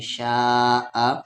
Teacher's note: میم کے ساتھ الف ما، شین کے ساتھ الف شا، مد کے سمبل کے بعد حمزہ ہے تو 3 سے 4 الف کے برابر کھینچیں گے